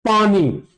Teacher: तो हम लोग का दोनों ओठ का यूज हुआ पानी। तो ये पवर्ग जितना प, फ, ब, भ, म सब का उच्चारण होठ से हुआ, और तवर्ग का दांत से। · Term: ओष्ठ